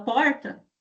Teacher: Quem fala porta pronuncia com aí esse modo de articulação que é considerado como retroflexo, esse R que é um pouco mais intenso